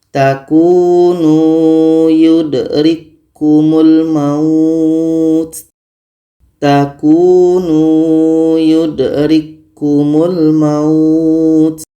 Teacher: Ka sudah sempurna masuk ke ka yang kedua. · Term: idgham mutamatsilin